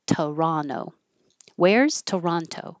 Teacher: the T after the N can be dropped.